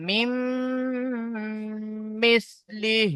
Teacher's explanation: আর মিমের উপরে জামু তাসদিদ আছে, তো মিম মুসাদ্দাদ গুণনা ওয়াজিব, একালি পরিমাণ আমাকে গুণনা করে পড়তে হবে।